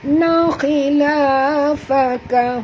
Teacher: huruf kha tebal walaupun baris bawah ya